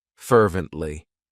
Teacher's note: It has three syllables and the stress is on that first syllable.